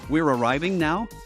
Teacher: intonation rather than by switching up verb tenses like in English by inflecting up at the end of the phrase we're arriving now becomes a question · a question is posed via intonation rather than by switching up verb tenses like in English by inflecting up at the end of the phrase